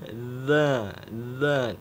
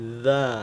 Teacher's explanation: Ingat makrop atau tempat keluarnya huruf za yaitu ujung lidah kita nempel ke ujung gigi seri atas dan ujung lidah kita keluar sedikit ya dari batas gigi. Dari ujung gigi keluar sedikit, ujung lidahnya kita gigit sedikit ya.